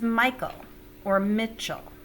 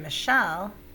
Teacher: the first syllable is accented in that case whereas in michelle the second syllable is accented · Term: accented syllables